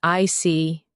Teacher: your tone drops slightly to show calmness